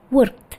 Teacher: Contohnya work past-nya menjadi worked. Jadi seperti t di belakangnya ya, bukan id.